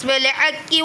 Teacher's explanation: بالحق کی حق قاف کو پر پڑھیں گے اور ہا کو باریک پڑھیں گے